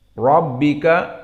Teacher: ra mufakhamah karena dia ra yang fathah